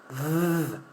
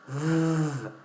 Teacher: Close to F, like F, but with voice.